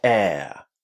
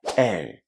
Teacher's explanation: In British English, we would use a diphthong in that word. We would say air.